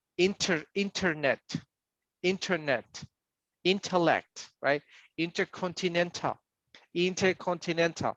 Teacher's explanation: They pronounce the T very strong, but we don't.